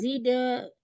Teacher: dal sukun dia qalqalah sugro, qalqalahnya dibaca lembut karena di tengah ayat